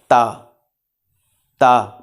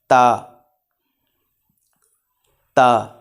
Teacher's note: ज़ुबान का सिरा और ऊपर वाले दांतों की जड़ से अदा होता है।